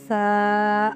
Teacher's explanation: हमारी जुबान की नोक और जो ऊपर वाले जो दो दांत है उनका सिरा यानी अंदरूनी किनारों से लगता है [संगीत] तो सा अदा होता है। · تا میں زبان کی نوک اور اوپر والے سامنے کے جو دو دانت ہیں ان کی جڑ سے تا، اور اگلا لفظ ہے ثا، یہ بھی اندرونی قرار ہے۔ ہماری زبان کی نوک اور جو اوپر والے جو دو دانت ہیں ان کا سرا یعنی اندرونی کناروں سے لگتا ہے